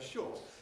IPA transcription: ʃɔːt